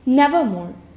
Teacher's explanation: He carefully selected the word Nevermore for its sound, the long O and the strong R.